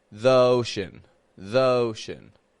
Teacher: pronunciation the the very commonly used now you see this happens if the word after the begins with a vowel a vowel sound then we say e as a long e you see this is because it's awkward to link awah sound